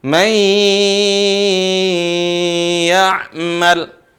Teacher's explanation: suara dengung disertai dengan mad, panjangin dikit.